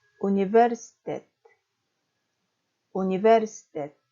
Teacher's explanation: 뒤에서 두 번째 스에 강세가 있는 것이 아니고 뒤에서 세 번째 모음인 외에 강세가 있습니다